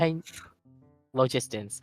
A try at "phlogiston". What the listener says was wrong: It's an F sound. Phlogiston.